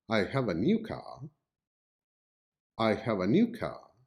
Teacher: the word new is the loudest sounding word in here · the word new is the loudest sounding word. And here, the speaker emphasizes the word new to signal or to make it clear to the listener that the car is new. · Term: focus stress